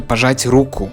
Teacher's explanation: the intonation just jumped to the first syllable